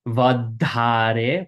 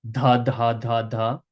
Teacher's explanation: Again, this DH is going to be a in between our teeth. Vadhare, we bite our tongue.